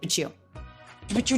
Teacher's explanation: ending T beginning y consonant into a CH